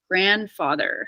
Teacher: don't really need to do the D fully because the N and the D are in the same place